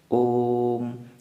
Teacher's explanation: ओ को ज़्यादा लंबा खींचते हैं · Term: प्लुत स्वर